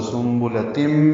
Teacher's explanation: اس کے بعد میم آنے کی وجہ سے ادغام ہوگا، سنبلتم، یہ ادغام ناقص ہے، غننے کے ساتھ ادغام ہوگا، آواز ناک کے بانسے میں لے جائیں گے